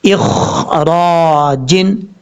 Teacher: خا حروف مصالحہ میں سے پر پڑھا جائے گا، قلقلے سے بچنا ہے. را کے اوپر زبر ہے، پر پڑھیں گے، ہیوی ساؤنڈ پڑھیں گے